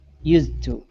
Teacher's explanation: You're not going to drop the D. You're combining it.